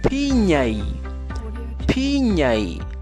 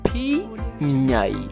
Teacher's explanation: Al momento de producir este sonido, los dos labios inferior y superior se unen.